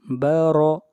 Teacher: با زبر با، را زبر را، بارا۔ را کو موٹا پڑھیں گے اس لیے کہ را کے اوپر زبر ہے